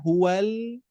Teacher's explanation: sesudah lam ketika melepaskan lam istila pangkal lidah mengangkat karena huruf lam ini menebal